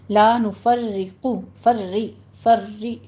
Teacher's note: یہ تھوڑی سی تکرار آئے گی لیکن را باریک پڑھی جائے گی کیونکہ کسرہ والی تشدید ہے